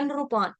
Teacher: संस्कृत में नृ आएगा, नरी नहीं आएगा